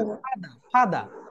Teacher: ফাদা, শেষের আরটা বাদ দিবে।